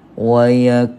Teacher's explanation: sebagai Mad Mat asli panjangnya dua harkat wayakulu ha gitu wayakunu panjangkan Tuan Puan dengan kadar dua harakat